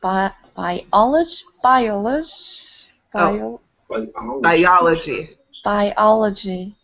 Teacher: So that even though I-O can sometimes be a diphthong, where you combine, for example, this one we're pronouncing each vowel separately, biology. So the emphasis falls on the second syllable, the A, biology.